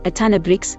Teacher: sometimes of is lazily pronounced a as in a ton of bricks